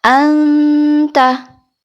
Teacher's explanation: cenderung ke huruf nun atau n contoh di huruf ta contohnya jadi tidak sampai ke belakang ya tidak dibaca Eng · yaitu tak PO dan dal Nah kenapa disebut ikhfa aqrab karena makhraj dari tapodal ini dekat dengan huruf nun sehingga membunyikannya lebih cenderung ke huruf nun atau n